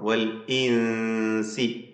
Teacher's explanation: സാക്കിന നൂൻ ഇഖ്ഫാ ഹഖീഖി നൽകി അവ്യക്തമാക്കി മണിക്കുക